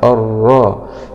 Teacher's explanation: لام سكون شمسية مدغمة في الراء المشددة مع الفتح